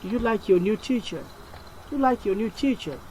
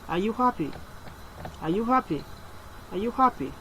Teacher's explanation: The questions both rise at the end. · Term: rising intonation tone